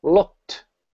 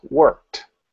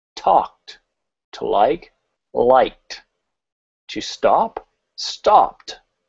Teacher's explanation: Again, we still have an ed sound there, but it's pronounced as a t. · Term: the unvoiced sound